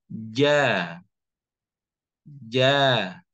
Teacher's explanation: bisa dilihat di tengah lidah bertemu dengan rahang atasnya. Jadi dikenakan ja, ja. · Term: huruf jim